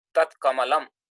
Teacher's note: So dakara, when it is followed by kakara, becomes takara. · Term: corresponding unvoiced consonant